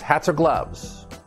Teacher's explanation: it's a consonant connected to a vowel and we tie everything together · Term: linking